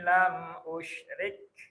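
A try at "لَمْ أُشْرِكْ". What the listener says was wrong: Rinya kasrah. Usyrik.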